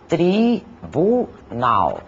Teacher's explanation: assim por exemplo na palavra tribunal composta por três sílabas tribunal as duas primeiras são átonas e a última é tônica aquela que falamos com maior intensidade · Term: sílaba tônica